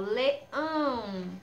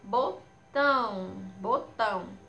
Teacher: quando a gente pronuncia a letrinha onde está o acento tio, o som sai pelo nariz. É como se o som saísse pelo nariz, é tipo um som nasal.